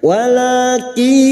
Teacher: Nun sukun atau tanwin yang bertemu dengan 4 huruf ini, ya nun mim wawu, maka masuk dan mendengung masuk pada huruf berikutnya, yaitu huruf ya, dan mendengung selama 3 harakat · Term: idgham bi gunnah